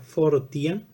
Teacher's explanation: al formarse el diptongo tenemos una articulación semi consonante y precisamente va a ser esa articulación semi consonante la que